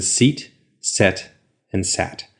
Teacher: your tongue starts up high, E, goes through the middle of the mouth, and then goes down to a. So your tongue can go up and down.